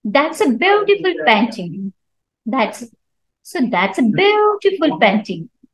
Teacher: So Beautiful is is an adjective which is stressed in this sentence